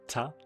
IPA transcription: tʰa